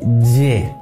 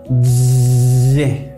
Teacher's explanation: Es como si el sonido viniera de una especie de enjambre de abejas que empieza a producirse en la parte interior de mi boca y el sonido choca contra mis dientes y digo Y, con los dientes cerrados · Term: sonido arrastrado